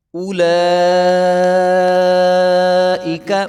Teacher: لام کے اوپر کھڑا زبر ہے اور مد بھی ہے، تو اس کو 5 سے 6 الف کے برابر لمبا کریں گے، اور یاد رہے کہ اس کو اولائکا نہیں پڑھیں گے۔